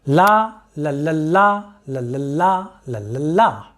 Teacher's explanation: containing a long syllable followed by two short syllables the pattern is like this la la la la la la